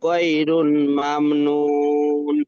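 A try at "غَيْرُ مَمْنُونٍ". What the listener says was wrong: গয়রু মামনুন, রুন নয়, এটা এক পেশ আছে।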